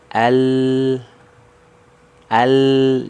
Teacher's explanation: huruf lam itu dari ujung lidah ya ujung lidahnya naik